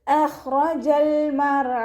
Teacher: റ ഫതഹ ആയതുകൊണ്ട് നമ്മൾ ഉയർത്തിയിട്ട് ഉച്ചരിച്ച് കൊടുക്കുക